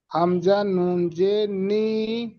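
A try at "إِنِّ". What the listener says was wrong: নি নয়, হামজা, শুধু হামজাদের কি উচ্চারণ হয়, শুধু হামজাদের কি উচ্চারণ হয়? হামজাদের ই উচ্চারণ হয়, ই ই, হামজাদের ই। তাহলে হামজা নুন জের ইন, ইন।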